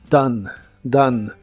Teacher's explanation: la o se pronuncia como a y la e del final es muda